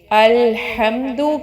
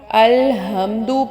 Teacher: الحمد میں جو ہا ہے وہ ڈیفرنٹ ہے، وہ حلق کے درمیانی حصے سے ادا ہو رہا ہے، لیکن جب آپ الحمدو پڑھیں گے تو یہ ہا مختلف ہے، یہ ہا سینے سے ادا ہو رہا ہے۔